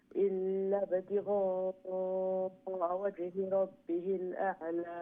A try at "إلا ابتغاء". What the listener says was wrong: Okay, you know when you say illa, don't say illab. Don't prolong the ill. Okay, illab, tigha'a, like that.